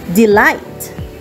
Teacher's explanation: Different types of meter include iambic, an unstressed syllable followed by a stressed syllable